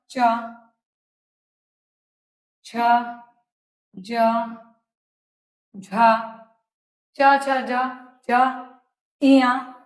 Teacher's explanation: वर्ग के सभी ध्वनियों के उच्चारण में जीहा का मध्य भाग तालू से तालो से स्पर्श करके निकलता है